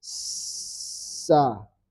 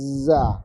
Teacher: Hamas murni angin. Karena terhalang suaranya dari bunyi. Dia murni angin. Sementara jahar itu kedengaran suara tak.